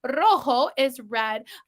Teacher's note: I Trill the r because it's the first letter of the word in Spanish